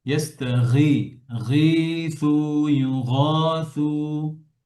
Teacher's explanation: গয়নের মাখরাজ খেয়াল করেন কোথায়? গলার শেষ।